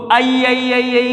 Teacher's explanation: एक ही ध्वनि कंपनित हो जाएगी। मुख के सामने एक ए नामक ध्वनि आ जाएगी बहुत देर तक आई को बोलते समय।